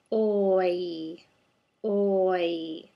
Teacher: What's difficult about this vowel is our lips go from a rounded state to a retracted state. Rounded to retracted.